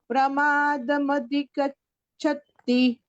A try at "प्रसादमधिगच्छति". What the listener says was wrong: प्रसादम अधिगच्छति, उल्टा हो गया, परमादम से उल्टा हो गया। प्रसाद, प्रसादम अधिगच्छति।